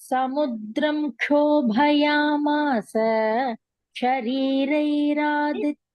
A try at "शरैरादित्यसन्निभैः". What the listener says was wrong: Not there. And what is there? Re is not there. What is there? You're saying Shariraditya. You're saying Sharira. It is Shara, which is arrow.